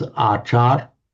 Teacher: Acharya. So in Thai, what they do, they often drop off the final syllable, so it becomes achar.